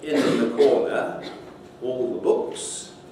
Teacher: So if I say in the corner, all the books, then I often just produce a long L or a long N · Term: assimilated